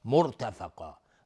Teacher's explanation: را ساکنه قبل ضمه اومده حکمش استعلاء میشه. مرتفقا و قاف هم از حروف استعلاء غلیظ تلفظ میشه، الف هم تابع قاف غلیظ تلفظ میشه.